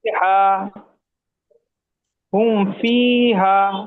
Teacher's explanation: মিম সাকিনের পরে পা এসেছে তাই মিমকে বিনা গুণনায় জাহির করে পড়তে হবে। একে ইজহারে সাফাবি বলে।